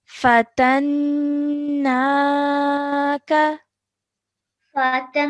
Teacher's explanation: 2 seconds holding the nasal sound and then 2 seconds letting it go to produce the vertical fatha sound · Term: noon mushaddad